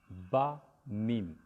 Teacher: تو با میم آپ دیکھیں دونوں ہونٹ کے ملنے سے ہوتے ہیں